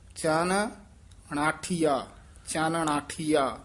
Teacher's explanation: ਪਹਿਲ ਨਨਾ ਬੋਲਨਾ ਫਿਰ ਨਾਣਾ ਉਚਾਰਨ ਕਰਨਾ ਕਈ ਵਾਰ ਅਸੀਂ ਦੋਵੇਂ ਨਨੇ ਬੋਲ ਜਾਂਦੇ ਹਾਂ